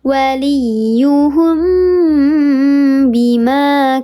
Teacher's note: Kalau ikhfa syafawi mim mati bertemu dengan huruf ba. Dibacanya disamarkan disertai dengan gunnah 3 harakat lebih utama.